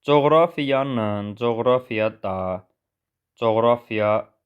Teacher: coğrafiya sözündə vurğu ikinci hecəyə düşür